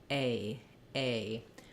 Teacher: when I say the ay diphthong I start more open and then I close and relax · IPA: eɪ